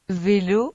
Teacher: Para pronunciarla se unen los labios con los dientes como para decir una F, pero el sonido vibra